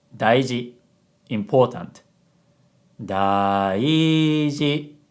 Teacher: An example of low, high, high is daiji.